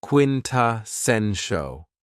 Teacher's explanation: this word has four syllables and the stress is on the third syllable